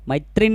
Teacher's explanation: मैत्रीण म्हणताना त्र ची वेलांटी आपण जास्त लांबवत नाहीत